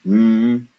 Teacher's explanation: when we close our lips mmm and we push air through our nose